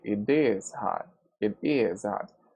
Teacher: And what we usually do is to emphasize or to stress the verb to be.